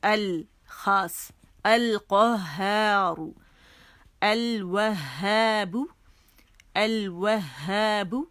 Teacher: قمری حرف اپنے سے پہلے لام تعریف کو ظاہر کرتا ہے. ٹھیک ہے, اس کے اندر مدغم نہیں ہوتا